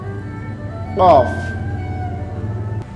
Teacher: suaranya dari tenggorokan awalnya tenggerokannya seperti ditutup kemudian dibuka